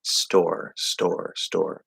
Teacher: The S will sort of soften the T and almost make it sound kind of like a D. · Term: soft T